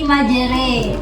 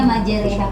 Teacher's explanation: Nah, di sini keterangannya fathah yang dimiringkan ke kasroh dan alif, maksudnya alif mat ya, yang dimiringkan ke ya, dibaca seperti orang timur. Huruf ro dibaca tarqiq, tipis.